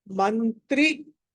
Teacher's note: మ తర్వాత అనుస్వారం అంటే అది న గా పలకాలి